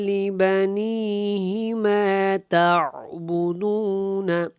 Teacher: لبنی کو ہم نے لمبا کرنا، ہی کو لمبا نہیں کرنا